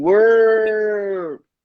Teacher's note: Mas é americanizado. A gente tem que puxar o R mesmo, como se fosse lá do interior de Minas Gerais